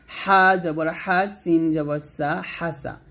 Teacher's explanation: হারে দেখুন হলকের মাঝখান থেকে চাপ দিয়ে চিকন করে উচ্চারণ করবেন। হা জবর হা, সিন জবর সা, হাসা।